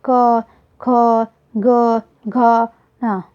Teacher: कंठ व्यंजन जो हमारे गले से बोले जाते हैं, क, ख, ग, घ, ङ।